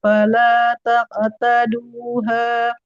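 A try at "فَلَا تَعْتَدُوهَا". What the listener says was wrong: Ta'taduha. Nggak taktaduha. Kalau taktaduha nanti jadi kaf. Fala ta'taduha. Enggak taktaduha. Ta.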